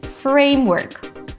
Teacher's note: It's a set phrase, like high school. So frame is gonna be a little higher in pitch.